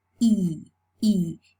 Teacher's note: you can feel that your tongue is tense. So we are tensing the muscles. Why? Because we need to keep our tongue tense to make the vowel long. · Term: fleece